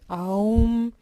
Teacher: Sa prononciation est nasalisée en fin de mot